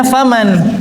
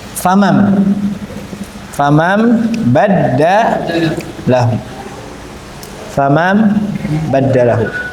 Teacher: Jadi nunnya diganti jadi mim. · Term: iqlab